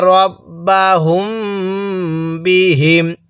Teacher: মিম সাকিনের পরে বা থাকলে গুন্না করে পড়তে হয়